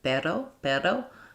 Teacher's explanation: where there's just like one light roll of a rolled R, then that can be helpful when you're trying to do the flap T and the flap D, because the flap is just one sound.